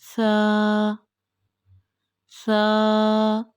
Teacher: जुबान की नोक जब ऊपर वाले दो दांतों के सिरे से लगेगी तो इससे सादा होगा